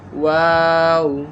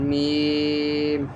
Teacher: ওয়াও দুই ঠোঁট গোল করিয়া বা দুই ঠোঁটের ভিজা জায়গা হইতে, মিম দুই ঠোঁটের শুকনা জায়গা হইতে